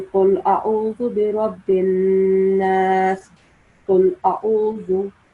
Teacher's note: The ayn sound should come from the middle of the throat, so it should be different from the alif sound.